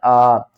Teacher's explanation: الف کے اوپر پھر کھڑا زبر آ گیا، کھینچ کر پڑھیں گے